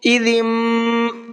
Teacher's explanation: میم کی آواز نکل رہی ہے اور غنہ بھی ساتھ ساتھ کرنا ہے